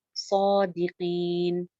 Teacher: ان کانو ان پہ کیا ہو رہا ہے اخفا کانو صادقین صاد ایک الف لمبا بھی ہے اور صاد موٹا بھی پڑھنا ہے